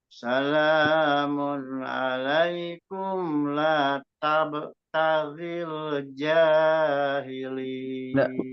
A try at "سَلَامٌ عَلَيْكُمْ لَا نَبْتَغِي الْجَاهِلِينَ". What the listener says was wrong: Nabtaghi ya. Itu nun ya. La nabtagil jahilin.